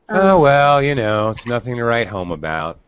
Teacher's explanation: you're definitely going to hear the intonation of, you know, the kind of low disappointment